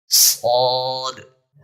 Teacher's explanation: فرق اتنا ہے کہ سین باریک پڑھا جاتا ہے، اس کی آواز باریک ہے، لیکن صاد کی جو آواز ہے وہ موٹی ہے، بھاری ہے۔ صاد کی آواز کیوں موٹی ہے کہ اس کو ادا کرتے وقت زبان تالو کی طرف بلند ہو جاتی ہے، اکثر حصہ زبان کا تالو کے ساتھ ایسے چپک جاتا ہے، اس لیے اس میں موٹائی پائی جاتی ہے۔